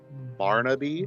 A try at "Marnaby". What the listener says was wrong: With an M.